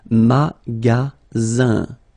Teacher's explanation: you've got only one S between two vowels. Then you get the sound Z · the ending here is IN, so it's nasal, it goes in your nose, and it's un.